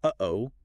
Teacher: Your vocal cords just slam shut really quickly, cutting off the airflow for a tiny moment. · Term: glottal stop